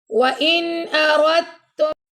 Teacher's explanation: را کو ہم نے تا سے ملانا ہے، دال کو سکپ کر دیں گے